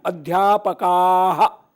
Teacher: तो आह वाली ध्वनि आपको जो सुनाई देती है वो विसर्ग की ध्वनि है।